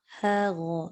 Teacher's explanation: Nipiskan ha, tebalkan ghain.